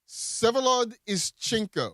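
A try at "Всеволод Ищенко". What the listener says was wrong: The V is silent in the first name.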